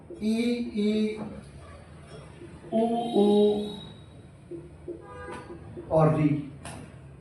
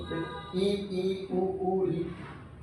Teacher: मुखाकृति के आधार पर संवृत मुखी, ये सारे के सारे ई ई उ ऊ और री संवृत मुखी है